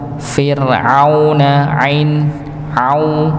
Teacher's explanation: Ya, pada Fir'auna ainnya ya dijelas, ya, jangan sampai dibaca seperti hamzah Fir'auna, harusnya Fir'auna ain au.